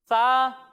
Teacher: जब हम इसकी अदायगी करेंगे तो इसमें ना सीटी की आवाज़ आएगी और ना ही इसे हम मोटा करेंगे